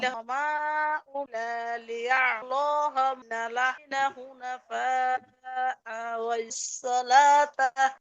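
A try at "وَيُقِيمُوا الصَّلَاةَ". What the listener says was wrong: আপু এই যে দেখছেন অনেকগুলো একসাথে পড়তে গেছেন, আপনার ওয়াকফ ঠিক মতো হয় নাই। ওয়ায়ুকিমুস সালাত এখানে ওয়াকফ করলে তো আলিফ টান হবে, তাটা হা হবে, তার চেয়ে আপনি তো আরো আগে ওয়াকফ করতে পারতেন আরো সুন্দর করে।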